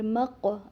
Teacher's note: اب یہاں پر قلقلہ ہو رہی ہے کیونکہ قاف جو ہے وہ ساکن ہے